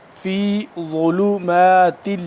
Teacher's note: ضا کو ادا کیسے کریں گے کہ دانت کے جو پیچھے والا حصہ ہے، سامنے والے دانت کے پچھلی سائڈ پہ زبان کو لگائیں گے تو ضا صحیح طرح سے ادا ہوگا